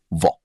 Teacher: दांत और होठ दोनों के सहयोग से बोला जाने वाला वर्ण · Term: दंतोष्ठ वर्ण, दंतोष्ठ्य वर्ण